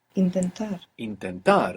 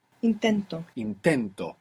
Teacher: we have the accent on the end when we put the O the accent is just before it